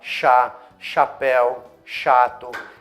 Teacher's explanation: pra falar chapéu a língua tá mais pra trás na boca